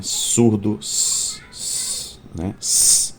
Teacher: Pode ser criado pelo contato da ponta da língua com as gengivas ou alvéolos, que são a parte do dente revestida pela gengiva, e neste caso as consoantes são chamadas de alveolares, como o S, por exemplo, né?